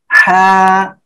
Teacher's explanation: এই যে হলক অর্থাৎ গলা, গলা এর মাঝখান থেকে গলাটা চেপে আমরা উচ্চারণ করব